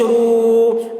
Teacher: بو را واو پیش رو واو ساکن سے پہلے پیش ہے واو مدہ ہوا اس لیے واو مدہ کو ایک الف کے برابر کھینچ کر پڑھیں گے